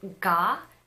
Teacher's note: When you say ga in English, you can feel that there is a vibration in your vocal cord. You can put a hand over here and compare ga and ka. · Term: voicing